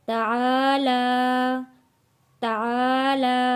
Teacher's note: کھڑی زبر ہے عین کے اوپر بھی لام کے اوپر بھی، ایک ایک الف کے برابر کھینچ کر پڑھیں گے۔